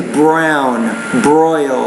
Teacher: you have the tendency to pronounce the R a little bit harder than what native speakers do when the R comes after another consonant. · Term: R consonant sound